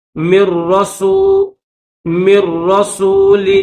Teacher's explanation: میم کے بعد یہ جو نون ہے, نون نہیں پڑھیں گے, میم کو ڈائریکٹ را کے ساتھ ملائیں گے